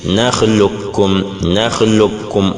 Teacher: Idgham complet ou total ici, c'est le fait de dire nakhluqkum, nakhluqkum, on prononce totalement la lettre kafun, on supprime qafun